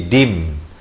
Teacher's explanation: kita tukarkan daripada bunyi nun din, jadi kita tukarkan kepada bunyi mim, jadi dim. Tapi bibir itu sekadar bersentuhan atau hampir bersentuhan. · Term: iqlab